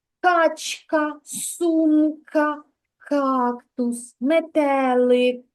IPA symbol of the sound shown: к